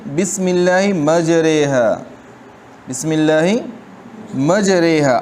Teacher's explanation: را کی اس حرکت کو زیر سمجھ کر را کو باریک پڑھیں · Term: امالہ